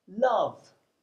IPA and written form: lʌv (love)